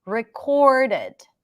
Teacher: The first R is stronger around your lips. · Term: strong R